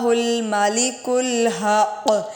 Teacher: یہاں پر جو کاف ہے وہ باریک ہے اور دوسرا کاف موٹا ہے۔ ہم کیا پڑھتے ہیں موٹا کرتے ہوئے مالک الحق، دونوں غلط پڑھ جاتے ہیں۔